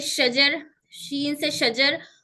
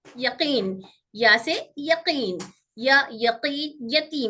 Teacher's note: तीनों भी बीच वाले हिस्से से निकलते हैं, जबान के दरमियानी और तालु के दरमियानी से